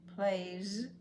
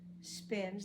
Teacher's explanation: the Y vibrates so the S also vibrates